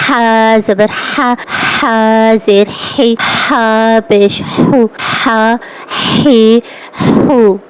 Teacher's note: اس کی آواز نکلنی چاہیے ہوا کے ساتھ